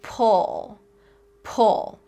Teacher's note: ooh like in pool and uh like in pull, our lips are going to be rounded. They should be forming a circle.